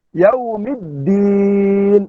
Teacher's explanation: Iaitu idgham syamsi alif lam dimasukkan ke dalam dal. Sebab tu ada sabdu. Tetapi tanpa guna. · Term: idgham syamsi bila gunnah